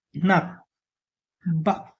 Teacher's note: गु जति बेला फाइनल पोजिसनमा आउँछ त्यो हाम्रो नेपालीको आधा क जस्तै प्रोनाउन्स हुन्छ।